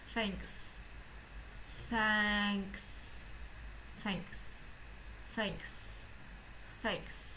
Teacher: Và bạn nhớ là, cũng nhớ bài trước mình có nói là trong tiếng Anh có âm nào thì phải đọc tất cả âm đó lên, nên bạn vẫn phải đọc âm k này, sau đó mới đọc âm s